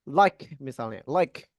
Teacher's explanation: ketika melafalkan bunyi K, nanti teman-teman usahakan diletupkan. Nah, jadi jangan ditahan.